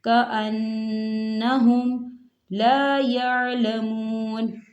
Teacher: وراء، وراء ظہورہم، ظہورہم، کأنہم، کأنہم، دیکھیں یہاں نون مشدد ہو رہا ہے، نون کے اوپر تشدید ہے تو یہاں غنہ ہوگا اور غنے کی مقدار دو حرکت کے برابر ہوگی